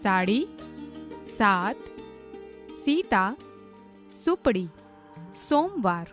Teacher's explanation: સ બોલતી વખતે દાંત, પેઢા અને જીભનું ટેરવું જોડાય ત્યાં અડાડીને બોલાય છે.